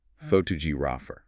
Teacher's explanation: the stress shifts to the second syllable